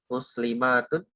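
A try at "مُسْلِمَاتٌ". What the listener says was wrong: maknya pendek, muslimatun, Ya, jadi kalau tadi dibaca panjang itu nanti artinya jadi jamak.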